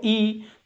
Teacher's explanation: ये जब आप बोलते हो तो जीभ का आगे वाला हिस्सा यूज होता है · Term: अग्र स्वर